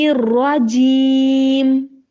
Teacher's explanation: پھر الرجیم، را کو موٹا کرنا ہے، را کی آواز موٹی بھی ہو اور اس میں کپ کپاہٹ بھی ہو